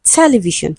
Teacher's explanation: the word TELEVISION is stressed on the first syllable